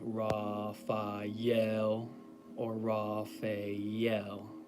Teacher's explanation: with the emphasis or the accent on the last syllable, the L. Physical descriptions of Raphael.